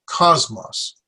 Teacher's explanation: I put my stress on the first syllable